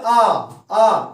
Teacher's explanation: जैसे अपन बोलते आ तो इसमें क्या हो जाता? अपना मुख पूरी तरह से खुल जाता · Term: विव्रत स्वर